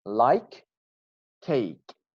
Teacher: Like at the end ends with k sound. The next word, which we have cake, starts with k sound. So together we sound them as one word.